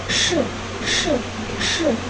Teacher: Diucapkan dengan posisi ujung lidah miring mendekati langit-langit keras dan sudut bibir ke arah samping. Ketika melepaskan hambatan, aliran udara mengalami geseran dari tengah celah. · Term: bunyi apikopalatal